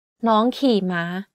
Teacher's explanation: In this sentence, the second word is in low tone, while the rest are in high tone.